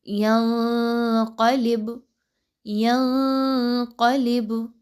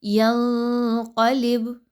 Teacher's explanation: یہاں پر آپ نے نون کی آواز کو ہرگز کلیئر نہیں پڑھنا، آپ نے اس کو مخفی رکھنا ہے، ناک میں چھپانا ہے۔ اس کے علاوہ اس کے لیے آسان ٹپ یہ ہے کہ آپ نے زبان کو منہ کے خالی حصے میں سیدھا رکھنا ہے، اور بالکل بھی موومنٹ نہیں کروانی، اور نہ ہی منہ کے کسی اور حصے کے ساتھ زبان ٹچ ہونی چاہیے۔ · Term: اخفا